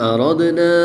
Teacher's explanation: دال حروف کلکلہ میں سے ہے، اور جب حروف کلکلہ ساکن ہو تو ان میں کلکلہ خوب ظاہر کرتے ہیں۔ یہاں پر ہم کلکلہ کو خوب ظاہر کریں گے۔